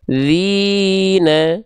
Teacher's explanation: thobiinya ini pengin terjaga dilafalkan dengan cara diayun diayunnya berapa kali diayunnya dua kali karena dia dua harakat maka kita Ayun dua kali